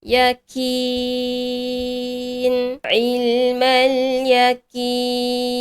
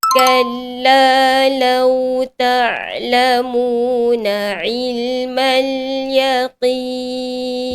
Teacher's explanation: huruf qaf dibaca nipis dan berangin seakan-akan bunyi huruf kaf · Maka sebutan dia yaqin perlu diangkatkan pangkal lidah menyentuh ke lelangit lembut.